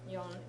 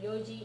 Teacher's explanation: Yo from yon, it drops the n for some reason, and yoji is 4 o'clock.